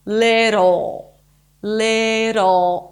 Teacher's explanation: add that pole in the back of your tongue that creates the dark L